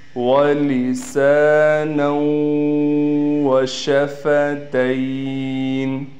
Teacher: نون کو واو سے ملا کر غنہ کیا جائے گا